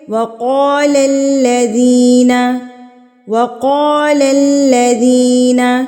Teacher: یہ والا قاف جو ہے نا یہ پر پڑھا جاتا ہے، یعنی کہ یہ موٹا پڑھا جاتا ہے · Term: موٹا قاف